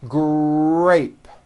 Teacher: in the word grape, the R sound is stronger and you even hear it more than the G sound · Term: R blends